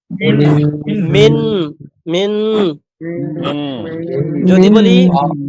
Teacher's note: আর মিমটাও সরাসরি মিম না, একটু মিন, মানে প্রথমে নুনের একটা আভাস আসবে, এরপরে সরাসরি মিম হয়ে যাবে। মিন মিন। যদি বলি মিম মিমজের মিম, তাহলে কিন্তু হবে না।